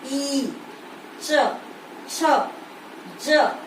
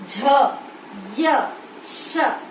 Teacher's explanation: तालु से उत्पन्न होने के कारण इन्हें तालव्य वर्ण कहा जाता है